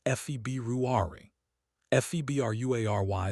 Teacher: BR right after B is difficult. Your lips have to stay together for the B, then your tongue has to move for the R, all in rapid succession